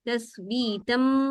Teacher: जब आप गुन्ना कर रहे होते हैं तो वो मीम का होता है, इसकी वजह से कहा जाता है कि आपके होंठ इस वक्त बंद होंगे, खुले हुए नहीं होंगे। अगर आप होंठ खुले रखेंगे तो यानी आप नून का इख्फा जैसा कर रहे होंगे, नून के गुन्ने की आवाज आएगी। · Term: इखलाब